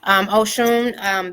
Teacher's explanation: In Yoruba, the S makes a sh sound.